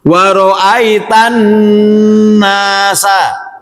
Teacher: Tidak menahan atau memanjangkan na pada kata annas.